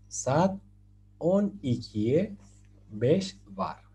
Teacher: esta V se lee con el labio inferior y con los dientes superiores. La V, por decirlo así.